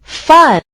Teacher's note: put your hand on your throat it did not move or vibrate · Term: f sound